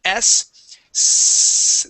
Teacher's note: there's no vibration. That is an unvoiced sound.